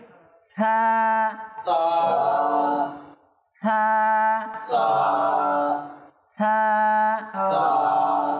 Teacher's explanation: মাদানী channel দর্শক শ্রোতা আপনারাও লক্ষ্য করুন, আমরা সাটা উচ্চারণ করার সময় জিহ্বার আগা দাঁতের আগায় লাগিয়ে তারপর স্বাভাবিকভাবে বাতাসটা ছেড়ে দেব